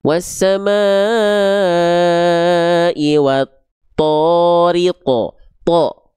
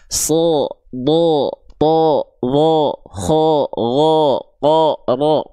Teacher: huruf tebal itu dia akan terdengar seperti vokal, seperti ya, bukan betul-betul, tapi seperti vokal O. Contohnya misalnya kita ambil contoh huruf to.